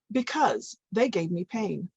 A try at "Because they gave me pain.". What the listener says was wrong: Pulling as one unit. So notice how I'm trying to get her to read it as the one unit instead of word by word.